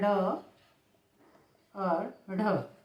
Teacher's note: मूर्धा क्षेत्र को स्पर्श करते हुए नीचे को गिरती है झटके से नीचे को गिरती है तो यह उत्त शप्त व्यंजन कहलाते हैं उत्त शप्त या द्विगुण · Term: द्विगुण व्यंजन